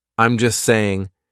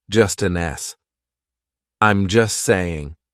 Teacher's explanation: We drop that T. We do not pronounce it.